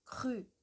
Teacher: a parte de trás da língua, ela vai tocar o céu da boca